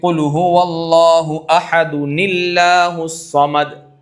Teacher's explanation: یہ دال کے اوپر جو تنوین ہے اس تنوین کا نون، دو ساکن جمع ہوئے تو پہلے ساکن کو حرکت دے دی گئی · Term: نون قطنی